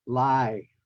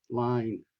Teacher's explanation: the sound N in these words are all dropped most often by Vietnamese people. So they would sound like lie rather than line. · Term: N sound